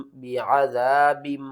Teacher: نون ساکن یا تنوین کے بعد اگلا حرف با ہوگا تو ہم نون کی آواز کو میم کی آواز میں بدل کر پڑھیں گے۔ اس قاعدے کا نام ہے اقلاب۔